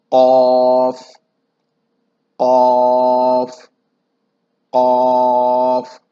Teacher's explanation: قاف کا مخرج گلے کا اندرونی حصہ جو تر و نرم حصہ ہوتا ہے، جس کے ساتھ اوپر ایک گوشت کا ٹکڑا جس کو ہم کوا کہتے ہیں، تو یہ حرف اس جگہ سے ادا ہوگا، اور اس کی ایک صفت یہ ہے کہ یہ بھی ہمیشہ موٹا پڑا جائے گا۔